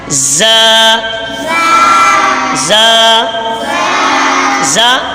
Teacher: जबान की नोक और दोनों दांतों के अंदरूनी किनारे से अदा होता है। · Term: जाल